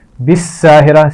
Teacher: اور را اس لفظ میں موٹا پڑا جائے گا